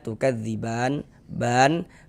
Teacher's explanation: Tapi tadi kita membacanya itu berwakaf. berhenti kita di huruf nun tukadziban sehingganya ba ini menjadi mad arid lisukun panjangnya boleh dua harakat boleh juga empat harakat boleh juga enam harakat